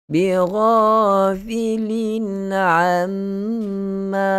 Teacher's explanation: Mim syaddah adalah wajibul gunnah. Mesti kita dengung dengan paling sempurna.